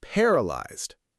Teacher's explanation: The stress is on the first part, paralyzed.